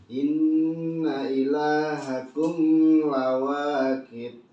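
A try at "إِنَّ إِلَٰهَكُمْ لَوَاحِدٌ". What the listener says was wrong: Satu, kumnya jangan ditahan. Terus lawakit jangan pakai k, tapi pakai h. Lawahide. Gak bisa pakai h, kayak h aja kali. Lawahide. Tapi lebih baik memang disempurnakan terus lawahi. Hi. Bukan pakai kok.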